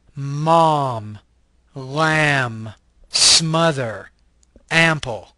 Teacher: This is a bilabial, nasal voice consonant.